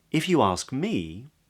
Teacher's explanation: lips come together for the M, me, and then they spread for the long E vowel.